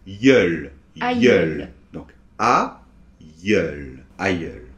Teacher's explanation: on a comme une heure, en fait, un peu, mais avec le ye de yo-yo, là, et en fait, à la fin, c'est un L. Donc, ça fait yeul.